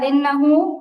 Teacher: ইন্নাহু হা উল্টা পেশ হু, এখানে টান হবে, টানটা দেওয়া হচ্ছে না